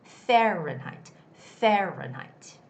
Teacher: That's a word that has the first syllable stress. So the stress goes on the A